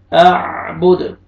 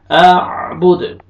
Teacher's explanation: हरूफ कलकला में से दाल है 5 लेटर्स, हरूफ कलकला खौफ, क़, ब, जीम, दाल, तो ये दाल हरूफ कलकला में से है, डबल साउंड आएगा